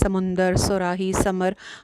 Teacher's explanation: ہم اردو میں سا جو ہے وہ بھی ویسے ہی پڑھتے ہیں، سین بھی، صاد بھی، مطلب ان میں کوئی ڈفرینس نہیں رکھتے پڑھتے وقت۔ سمندر، صراحی، سمر، ہم سب ایک ہی طرح سے پڑھتے ہیں۔